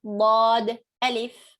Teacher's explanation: Bod is pronounced from the sides of the tongue, pressing against the upper molars and premolars